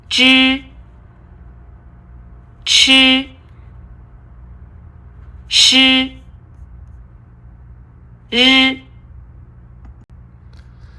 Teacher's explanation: curl up the tip of your tongue against the roof of your mouth and then loosen it ever so slightly just to let the air squeeze out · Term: curling tongue initials